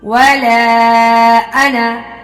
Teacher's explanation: وَلَا أَنَا، مد جائز، حروف مدہ کے بعد اگر حمزہ دوسرے کلمہ میں ہوگا تو مد جائز ہے، 3 الف کے برابر لمبا کریں گے